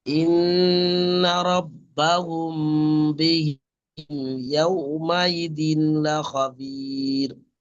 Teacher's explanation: মিম সাকিনের কায়দা হয় বা উম, মিমের পরে বা এসছে, বা থাকলে গুণনা করে পড়তে হবে।